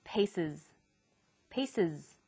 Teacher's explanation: The S on the end is pronounced z because it followed an S sound.